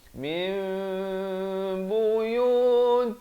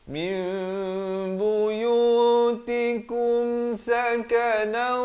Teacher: ditukarkan daripada bunyi nun kepada bunyi mim dengan kadar panjang 2 harakat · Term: iqlab